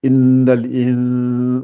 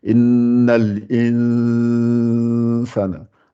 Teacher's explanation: Le nun, on le dissimule au fait. C'est le nun qui est un peu caché, qui est un peu noyé dans le sin. Donc ça fait innal in. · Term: ikhfa